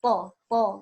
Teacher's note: Nah, kalau to, memang ujungnya di situ, di gusi gigi seri, tapi nanti dia diangkat pangkal lidahnya ya, dan menutupi langit-langit.